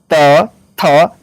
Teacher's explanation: त वर्ग जो होता है दांत से होता है